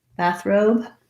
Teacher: syllable stress and then no stress on the second syllable but in the word bathrobe i also have to have some length and stress on the robe or it's going to sound like bathroom it doesn't · that are like this one we have stress on both syllables the primary stress is going to be on the bath syllable